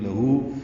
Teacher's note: لام کو جلدی پڑھیں گے، باریک پڑھیں گے. ہو الٹا پیش، 2 حرکات لمبا کریں گے.